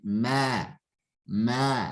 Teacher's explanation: Jangan dibaca wa ma, tapi wa ma, ya. Karena mimnya memiliki sifat infitah, terbuka ya, sifatnya terbuka, tidak terkumpul ya. Artinya suara itu atau nafas itu langsung keluar ya, tidak terkumpul, terkumpul di antara lidah dan langit-langit ya.